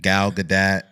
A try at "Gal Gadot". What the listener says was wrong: I said Gadot. You said Gadot. You added a whole other A.